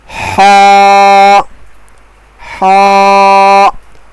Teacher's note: ہا کا مخرج گلے کے درمیانی حصے سے ادا ہوتا ہے